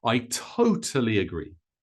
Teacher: we stress the second one I totally agree notice that agree comes a little quieter and a little shorter so faster